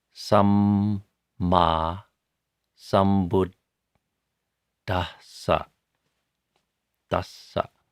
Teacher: So samma sambuddhassa, you pronounce both M's and both D's and both S's. The two D's, by the way, are a hard D and then an aspirated D.